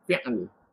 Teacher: Kita wakaf dengan sukun. Ini memang sebut fi'. Lepas tu pergi ke makhraj lam. Fi'l. Susah sikit lah.